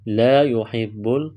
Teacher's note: الف مدہ ہے، ایک الف کے برابر کھینچنا ہے